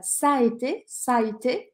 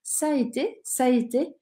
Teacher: É um verbo composto, mas você não precisa se preocupar com isso agora. Quando eu falo rápido, eu acabo emendando os dois A's. E aí o som fica ça a été, ça a été, quase como se eu não tivesse o segundo A.